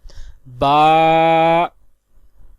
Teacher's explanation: با، دونوں ہونٹوں کے تر حصے سے ادا ہوتا ہے